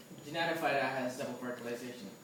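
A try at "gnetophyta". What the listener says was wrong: But see, typically in English, there's no GN sound, so it's silent G. Yeah, like, you ever heard of an insect called a gnat?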